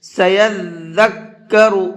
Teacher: ذال پہ بھی رکنا ہے اور کاف پہ بھی رکنا ہے اور دونوں کو ڈبل پڑھنا ہے